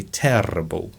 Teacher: It's just like the RP, but you have to roll the R's and maybe stretch the vowels a little bit.